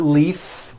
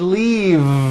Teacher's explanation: it's not leaf with an unvoiced F I should have said leave with a voiced V sound